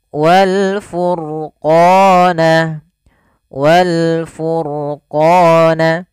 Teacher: pada lafal ro furqana ini rnya dibaca dengan tebal maka ini kita bisa katakan dengan ro tafkim